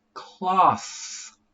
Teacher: And this one is cloth. Th with unvoiced.